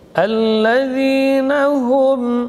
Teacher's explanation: ha huruf hamas dan rakhawah keluar di pangkal tenggorokan. Hu, ya, dorongannya dari pangkal tenggorokan, tidak boleh cenderung ke mim.